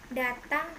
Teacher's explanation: Konsonan D, kriterianya bunyi apicoalveolar hambat bersuara, contoh kata datang.